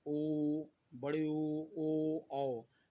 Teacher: वह स्वर जिसके उच्चारण करते समय ओष्ठ का आकार क्या होता है, वृत्तकार होता है, तो इसे वृत्तकार स्वर कहेंगे।